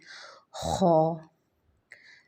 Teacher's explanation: اس خو کو پڑھتے ہوئے خراش والی آواز آنی چاہیے